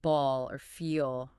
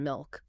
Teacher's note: The dark L, that's the one at the end of words like ball or feel, right? or before consonants like in milk.